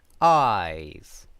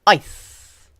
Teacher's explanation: eyes has a long vowel sound, eyes, while ice has a short vowel sound. And that's because diphthongs, including the diphthong I, are pronounced long or short depending on the sound that follows them.